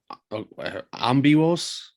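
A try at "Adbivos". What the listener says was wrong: With a D. Bivos. So it's a D and a B.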